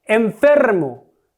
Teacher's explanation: es una palabra llana, porque su sílaba tónica es fer